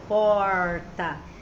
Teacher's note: É o R do porta, por exemplo, esse R mais puxado é o R retroflexo